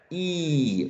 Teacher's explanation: E is not produced with your lips shaped in a circle because they are spread. E, right? So it's an unrounded vowel sound.